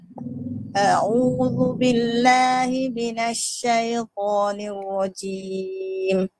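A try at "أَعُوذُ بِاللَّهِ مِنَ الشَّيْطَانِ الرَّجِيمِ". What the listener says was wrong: Cuma pada shin tu, a'udhu billahi minasy. Jangan muncung. Minasy. Tengah lidah ke langit-langit atas.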